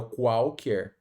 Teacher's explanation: Já o segundo QU, né, o U não é pronunciado